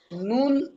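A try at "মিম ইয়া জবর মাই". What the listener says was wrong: মিম, মিম। নুন কেন ভাই? মিম। মিম ইয়া জাবার মাই।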